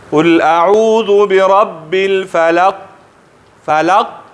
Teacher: آواز خو فورا بند شو د شدت د وجې نه